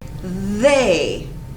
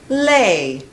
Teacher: the sound that people from Taiwan say is the l sound not the th voiced sound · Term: voiced th sound